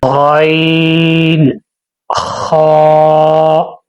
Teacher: حلق کے ابتدائی حصے سے ادا ہوتے ہیں۔